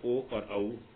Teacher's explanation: अ और उ को मिलकर के बना ओ और औ, तो इन दोनों का उच्चारण स्थान कंठोष्ठ है।